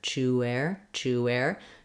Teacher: There still is a little bit of a w sound as we connect from that rounded oo to the unrounded air